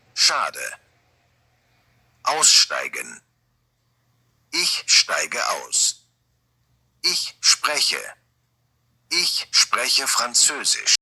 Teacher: these sounds, st, sp, sh, are all this sh sound